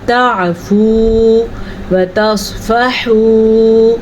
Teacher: میں نے سواد کو پر پڑھا، پھر میں نے ہا کے مخرج کا دھیان رکھا کیونکہ سواد جو ہے حروف مستعلیہ میں سے ہے۔